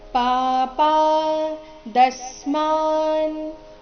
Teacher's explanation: ದ ಮೇಲೆ ಆಘಾತ, ಮುಂದೆ ಸ್ಮ ಸಂಯುಕ್ತ ಅಕ್ಷರ ಇದ್ದ ಕಾರಣ ಸ್ಮ ಆದ ನಂತರ ಅರ್ಧನಕಾರ ಇದೆ.